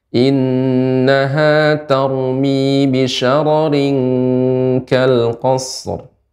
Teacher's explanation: dan ra dibaca dengan tebal